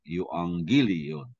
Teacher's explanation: double gamma is pronounced as nga, no? With the ng sound.